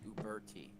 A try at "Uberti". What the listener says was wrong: There's an I there.